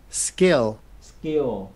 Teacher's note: cái âm K mà không bật hơi trong tiếng Anh nó có khuynh hướng giống với âm K trong tiếng Việt